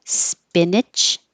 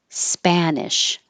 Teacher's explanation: Open more for the ah.